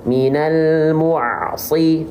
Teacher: Makhraj huruf ain itu dari wastul halqi. Wastul halqi itu tengah tenggorokan, ya.